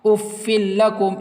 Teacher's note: ادغام را اور ادغام لام، یعنی یہ دونوں جو ہیں وہ کبھی نہیں کھینچے گا